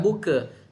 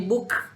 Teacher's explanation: Pastikan dia ada bunyi angin sedikit. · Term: Kaf mati